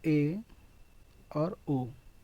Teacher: अर्ध संवृत का मतलब होता है कि मुख द्वार जो है वो लगभग आधा बंद रहता है।